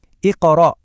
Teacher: Ada pantulan tipis di huruf qof di tengah itu. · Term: qalqalah sugra